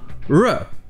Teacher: En français c'est re, mais en anglais c'est sans le frottement, re. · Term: le son du R